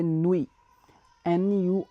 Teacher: we will not pronounce T at the end